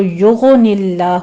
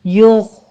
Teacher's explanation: یغ غین کو پر پڑھنا ہے، غین کے پر قلقلہ نہیں کرنا، اس کو یغن اللہ نہیں پڑھنا، یغ آپ نے ادنا حلق میں لے جا کے آواز کو سٹاپ کر دینا ہے